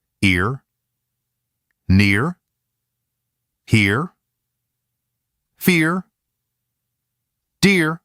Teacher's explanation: Compared to /er/, the starting point is narrower, brighter, and a little higher. Then from there, it curls directly into /r/. · This sound should start narrower and lighter than air. But just like before, the ending still needs to finish clearly in /r/. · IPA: /ɪr/